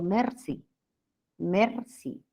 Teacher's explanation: pronunciar por ejemplo la r del francés yo digo Mercy Mercy mi r es alveolar en español